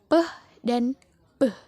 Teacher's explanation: Bilabial artinya bibir. Maka fonem ini dihasilkan di antara bibir